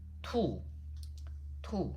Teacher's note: That is the falling tone, which is the 4th tone.